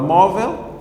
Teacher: mo é a sílaba tônica, que é a penúltima.